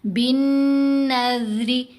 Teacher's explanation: زال کی ادائیگی کے وقت ہماری زبان دانتوں کے درمیان میں آئے گی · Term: زال کی آواز